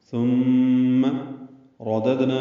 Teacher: دال ساکن ہے، اس پہ قلقلہ ہوگا، دد نا نون پر کھڑا زبر ہے، قائم مقام مد اصلی الف مد، 2 حرکات لمبا کریں گے، ہا کو جلدی پڑھیں گے۔